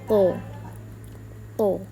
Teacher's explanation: Huruf th ini juga termasuk di dalam golongan alisan dengan ujung lidah ke pangkal gigi seri atas. Suara lebih tebal. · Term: huruf to